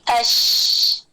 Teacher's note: आवाज अंदर दांतों से टकरा के जबान पे फैलती है तो तफशी बनती है। · शीन में तफशी थी, आवाज फैल गई